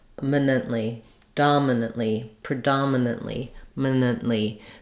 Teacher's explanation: these are reduced vowels so I'm not saying a clear Min I'm not using an i or an a vowel for these they're just going to be short minant dominantly predominantly minant so I'm barely using a vowel there · I'm barely using a vowel there at all I'm almost going right from the m to the N